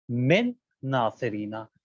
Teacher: کہتے ہیں لفظ من اور ناصرینا کے اندر دو حرف ایک طرح کے آ گئے، دو حرف نون آ گئے، تو اب یہاں کے اوپر نون ساکن سائلنٹ ہوگا، اور جو اس کے بعد والا ناصرینا کا جو نون ہے اس کو مشدد کریں گے، تشدید کی علامت آ جائے گی، من ناصرینا. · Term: ادغام مثلین